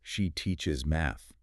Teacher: that pitch accent, that little spike in frequency, tells the listener, this is the new information.